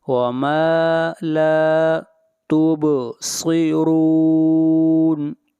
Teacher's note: با کے اوپر قلقلہ ہوگا، آواز کو ہلائیں گے اور صاد کو موٹا پڑھا جائے گا، صاد حروف مستعلیہ میں سے ہے اور را کو موٹا پڑھیں گے اور را کے اوپر پیش ہے۔